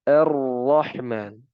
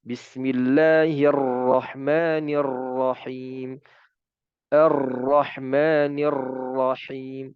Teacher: cukup getaran yang alami atau natural, 1 kali getaran.